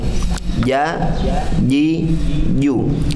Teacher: Tengah-tengah lidah diangkat ke langit-langit. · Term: jim